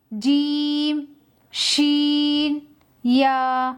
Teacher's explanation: जबान का बीच ऊपर के तालू से मिलकर अदा होते हैं।